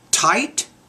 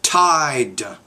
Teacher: The T is a voiceless consonant, D is a voice consonant.